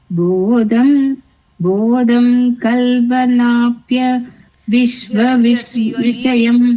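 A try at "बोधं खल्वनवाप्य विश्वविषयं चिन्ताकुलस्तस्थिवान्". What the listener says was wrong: Here you are leaving the na. Because you are leaving the na, you are unable to fit it in there. Bodham Khalvanavapya Vishwa Vishayam Chintakulastasthhivan.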